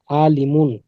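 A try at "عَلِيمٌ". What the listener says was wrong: আলিম, আইন তো টান নেই, এই যে আইনের উপর এক জবর আছে। টান হবে না।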